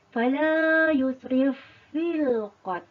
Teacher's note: ada pertemuan huruf antara fa bertemu dengan fa dan dibaca dalam keadaan tidak dengung